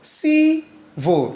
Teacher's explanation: Going up before going down. So the stress is on the first syllable.